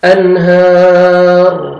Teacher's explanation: ہا کو کھینچ کے را کو پر کرنا ہے کیونکہ را ساکن سے پہلے فتح ہے